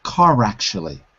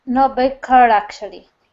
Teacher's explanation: So it's not actually, it's rack-shally.